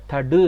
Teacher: தடு என்று சொல்லி இதழ் குவியாம உச்சரிக்கிறோம்